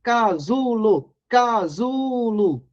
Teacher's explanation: a sílaba tônica portanto é a penúltima sílaba